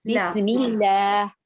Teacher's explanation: جی بسم اللہ میں نظر آ رہا ہے، میم بسم اللہ میں دیکھ لیجئے، اللہ کے نام سے پہلے میم کے نیچے زیر ہے تو بسم اللہ میں لام جو ہے پتلا پڑھیں گے، بسم اللہ منہ پھیلا کے، بسم اللہ موٹا نہیں کریں گے